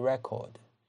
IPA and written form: 'rekərd (record)